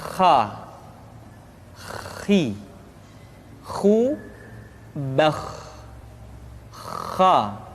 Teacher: pengucapan huruf kha persis terdengar seperti orang yang tidur dalam keadaan mengorok